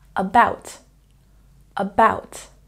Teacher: about has a stress on the second syllable